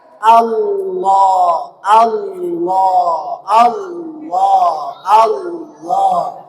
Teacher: jadi yang membuat dia tebal adalah lidah. Pangkal lidah yang terangkat. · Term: tafkhim